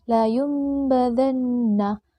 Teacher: Apabila nun sukun atau tanwin bertemu dengan huruf ba, maka bacaan nun sukun atau tanwin berubah menjadi berbunyi mim. Contoh, la yumbadanna harus dibaca la yumbadanna. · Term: iklab